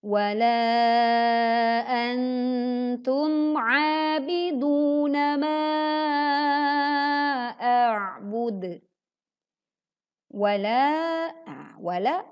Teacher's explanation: walaa sama kita bacanya 4 sampai 5 harakat seperti laa di ayat kedua